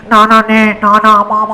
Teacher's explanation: नाक और मुख दोनों से बोले जाते हैं